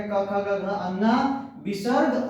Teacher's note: क वर्ग में 5 वर्ण आपके आ जाएंगे, क, ख, ग, घ, अंगा, विसर्ग, और ह वर्ण का उच्चारण स्थान किससे होता है, तो वह हो जाएगा कंठ से